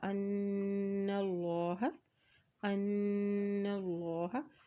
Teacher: اللہ کے نام سے پہلے زبر آ گیا ہے تو اللہ کا نام یہاں پر موٹا ادا کیا جائے گا